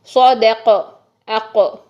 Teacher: اب اچھا ہم نے قاف کو کرنا ہے سائلنٹ، تو قاف کو کیسے پڑھیں گے؟ اس کی آواز کو ہلا دیں گے